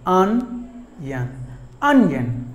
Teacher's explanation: just two syllables, but the stress falls on the first syllable